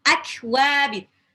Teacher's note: kaf sukun itu punya sifat syiddah, tertahannya suara yang ditahan suara hamasnya.